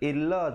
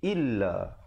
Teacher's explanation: Hamzah dari bawah bunyi i, bukan bunyi a.